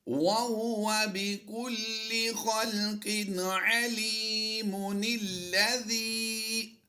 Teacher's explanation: ہم نے میم کی پیش کو پڑھا اور اس نون کو زیر کے ساتھ ہم نے یہاں پر ملا دیا۔ علیم الذی نہیں پڑھیں گے بلکہ پڑھا جائے گا علیم الذی، یعنی ہم نے اس لام کے ساتھ اس نون کو ملایا ہے۔